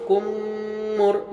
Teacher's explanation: اور کاف میم پیش کم، میم را پیش مر، کم مر۔ یہاں پر میم سے میم آیا تو یہاں ادغام شفوی ہوا، جہاں غنہ کے ساتھ پڑھیں گے